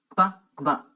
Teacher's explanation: They have a double articulation at the lips and at the back of the roof of the mouth. Gb, Gb. The letter P in writing represents the sound Gb. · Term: velar labial stops